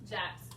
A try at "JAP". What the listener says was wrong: No, JAPS. JAP show. You ain't gotta say Japs.